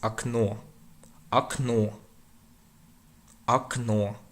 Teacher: So an unstressed or is pronounced a.